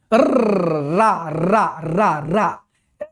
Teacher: जबान कांपती है, देखो प्रकंपन हो रहा है